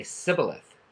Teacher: they'd say Sibboleth, because they could not make the sh sound in their culture.